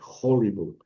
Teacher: Eh, y se a pesar de que transliteramos el espíritu rudo como H, sí se pronuncia, sí se pronuncia y se pronuncia con una J suave